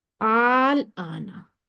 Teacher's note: حرف مدہ آ گیا لیکن اس کے بعد لازمی سکون آ گیا، تو اس کو ہم کہیں گے مد لازم کلمی مخفف، آل آنا۔ اس کی مقدار طول یعنی 6 حرکت ہے، 6 کاؤنٹس دیتے ہیں اس کو، جب ہم انگلیوں پہ 6 تک کاؤنٹ کرتے ہیں، وہاں پہ ہاتھ پھیرتے ہوئے 6 تک کاؤنٹ کریں گے، اپنی انگوٹھا لے کر جائیں گے تو وہ اتنی اس کی مقدار ہوگی، آل آنا۔